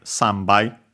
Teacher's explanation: the nasal of san, then it becomes voiced